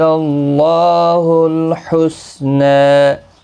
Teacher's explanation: اللہ کا لام ایک الف کی مقدار کے برابر کھینچیں گے، کھڑی زبر کی وجہ سے، پر بھی پڑھا جائے گا اس زبر کی وجہ سے۔ حسنہ نا الف مدہ ہے، نا کو بھی ایک الف کی مقدار کے برابر کھینچیں گے وقف کی صورت میں بھی اور ملانے کی صورت میں بھی۔